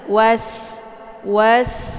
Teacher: sini ada sin sukun ya cara baca sin-nya yaitu ditipiskan kemudian sifatnya dia itu adalah safir jadi safir itu anginnya itu lebih jelas